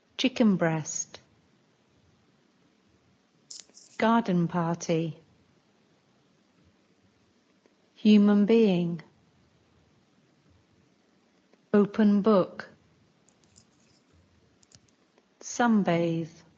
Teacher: sometimes n sounds more like M